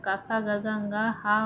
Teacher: कंठ और निचली जीभ के स्पर्श से बोले जाने वाले वर्ण कंठ कहलाते हैं। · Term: कंठ ध्वनि